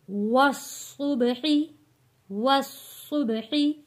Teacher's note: با پہ قلقلہ ہوگا کیونکہ با کے اوپر جزم ہے